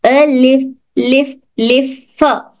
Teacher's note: हमारे होंठ, नीचे के होंठ की तरी को टच होकर हर्फ फा अदा होता है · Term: फा की आवाज